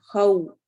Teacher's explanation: ولا الف مدہ، خوفن، خو، خو اس کو خوفن نہیں پڑھنا، خو چونکہ واو ہے تو منہ گول ہو جائے گا ، خو پڑھا جائے گا، خوف علیہم، خو واو